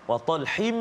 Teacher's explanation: Masukkan bunyi dengung atau bunyi tanwin, masukkan bunyi tanwin hin tu ke dalam mim dengan sempurnalah, maksudnya masukkan penuh. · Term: Idgham ma'al ghunnah